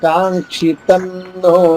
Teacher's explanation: తర్వాత నో ఉంది కాబట్టి అనుస్వర ఉచ్చారణ ఇక్కడ నా అవుతుంది.